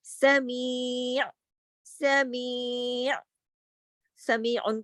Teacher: یا کو کھینچ کر عین کو ساکن کر دیں گے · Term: یا مدہ